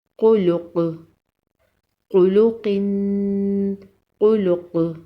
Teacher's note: وقف کی صورت میں قاف پر قلقلہ ہوگا